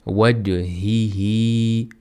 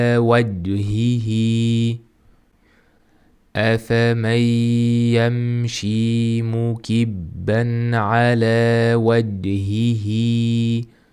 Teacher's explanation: Bu yerda ja harfi qalqala harflardan biridir. Hamda bu yerda qalqala qilish kerak